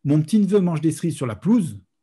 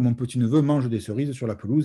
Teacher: le E, qu'on appelle parfois muet, mais qui n'est pas muet chez nous, puisqu'on le prononce souvent. C'est ce qu'on appelle un schwa en, ou schwa en phonétique, donc d'où mon jeu de mots foireux, l'embarras du choix.